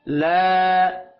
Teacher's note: الف مدہ ہے، یہ ایک الف کے برابر اس کو کھینچ کر پڑھیں گے۔ لا، لام کے اوپر کھڑی زبر ہے، اس کو بھی ایک الف کے برابر کھینچ کر پڑھنا ہے